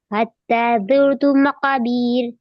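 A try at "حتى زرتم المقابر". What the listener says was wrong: مقابر ہے، بیر نہیں کریں گے، یا مدہ نہیں ہو رہا وہاں.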